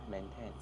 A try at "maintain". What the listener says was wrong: It's a long A. So it should not be a short E.